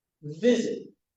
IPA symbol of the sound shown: ɪd